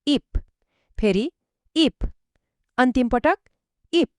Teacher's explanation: यहाँ अन्त्यमा फी छ, तर नियमअनुसार यसको अन्तिम ध्वनि पनि प नै हुन्छ · अन्त्यमा फि छ तर नियम अनुसार यसको अन्तिम ध्वनि प नै हुन्छ। ल सँै भनौ इप फेरी इप अन्तिम पटक इप ल अहिले सम्म एकदम राम्रो अब हामी दोस्रो र भन्नुपर्दा अझै सजिलो खण्डमा जादैछौ।